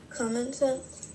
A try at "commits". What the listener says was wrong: Commits. Don't add extra syllables. Commits. Usually if it's I-C-I, that C is going to be a soft C. So not a hard C like K, but a soft C like S.